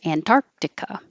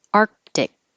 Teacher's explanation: you put your tongue in the K position and but you don't release it